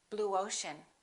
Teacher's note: put a little W in there